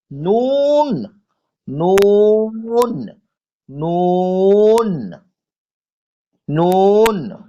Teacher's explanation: জিভের আগা এবং তার বরাবর উপরের তালুর সাথে লাগিয়ে উচ্চারিত হয় নুন।